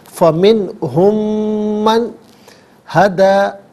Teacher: اچھا جی، اب ہم میں آپ دیکھیں میم ساکن ہے، میم ساکن کے بعد من کی میم ہے، میم ساکن کو من کی میم کے ساتھ ملائیں گے اور میم کی آواز کو ہی غنے کے ساتھ ادا کیا جائے گا